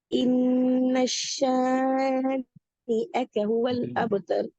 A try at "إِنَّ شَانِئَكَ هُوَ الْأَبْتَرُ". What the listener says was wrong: நீங்க அது ஷத்து வச்சு ஓதுறீங்க, அது பல. அதாவது உங்களை அறியாம நீங்க இந்த இடத்துல ஷத்துக்கு வரீங்க. இன்னஷ என்று வரக்கூடாது. இன்னஷ இன்னஷானி இன்னஷானி.